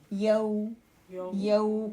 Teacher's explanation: ہونٹ ابھی زیر کی طرح اوپر کھلنے ہی والے ہوتے ہیں کہ بالکل اس کو گول کر دیا جاتا ہے، نرمی سے بغیر لمبا کیے ادائیگی ہوتی، یو، یو، کوئی ایفرٹ نہیں اس پہ لگتی۔ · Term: واو لین